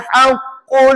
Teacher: Bukankah nak sebut qaf digunakan pangkal lidah? Ha pangkal lidah tu ditekan pada anak tekak kita. Anak tekak tu kat belakang. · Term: sifat ismat